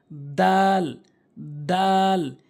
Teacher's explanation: জিহ্বার আগাটা সামনে 2টি দাঁতের আগাতে লাগাবেন, এই তার মতো করে।